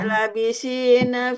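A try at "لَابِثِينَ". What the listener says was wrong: Panjang, Bu.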